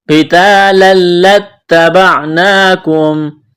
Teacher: موٹا کرنا ہے، تا کو باریک کرنا ہے، الف مدہ ہے، تنوین کے بعد لام ہے، ادغام کریں گے بغیر غننے کے